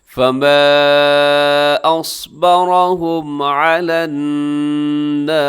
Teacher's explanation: ہے، اصبرهم، ہم میں میم ساکن کے بعد عین ہے تو یہاں پر اظہار شفوی ہوگا، یعنی ہم پہ آپ زیادہ ٹھہریں گے نہیں بلکہ تیزی سے آگے پڑھ دیں گے